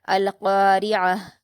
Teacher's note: یہاں پر یہ نوٹ کرنے کی بات ہے کہ فلو میں ہم کبھی کبھی کیا کرتے ہیں، القاریہ پڑھ دیتے ہیں، تو یا جیسی آواز نہیں آئے گی، کیونکہ اس آیت کے اندر آپ کو یا نظر نہیں آئے گا، یہاں پر عین ہے تو ہم عین کی آواز کو حلق سے ادا کرتے ہوئے پڑھیں گے